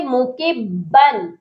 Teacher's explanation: یہاں جو با کے اوپر تنوین ہے ادھر غنہ نہیں ہوگا، یہاں پر صرف اظہار کرنے ہیں